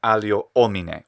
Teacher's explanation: is that he's saying allio omine with a distinct hiatus hiatus where he's breaking it up putting in a glottal stop in between which it just doesn't sound right here i definitely don't recommend